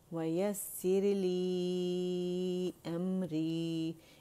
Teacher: اس کو 4 کاؤنٹس ضرور لازمی کھینچیں گے کیونکہ مد منفصل جائز بن رہی ہے، اور ہم جو طریقہ پڑھ رہے ہیں حفص عاصم تھرو شاطبیہ وہ پڑھ رہے ہیں، تو اس میں لازمی 4 to 5 کاؤنٹس کھینچا جائے گا۔